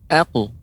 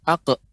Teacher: jangan sampai dia pengucapannya ak ya, seolah ada hamzah di ujungnya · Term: huruf qaf